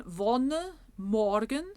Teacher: the open Oh which looks like a backward C as in English words talk and ought